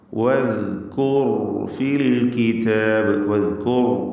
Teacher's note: ദാല് കൃത്യമായി മഖ്റജിൽ നിന്ന് ഉച്ചരിക്കുക. നാവിൻ്റെ അറ്റത്തിൻ്റെ മുകൾ ഭാഗം മേലെ മുൻപല്ലിൻ്റെ അറ്റവും ചേർത്ത് ദാൽ ഉച്ചരിക്കണം. വദ്കൂർ ഫിൽ കിതാബ്, വദ്കൂർ റാഇന് തഫ്ഖീം കൊടുക്കുക, തടിപ്പിക്കുക.